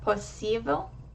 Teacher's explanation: the I is accented, it's more open, and it's pronounced for a longer time than I. So if I was to say that word without the accent, it would be possível.